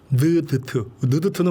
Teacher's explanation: 느드트는 우리 혀 끝에서 나죠. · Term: 혀 설소리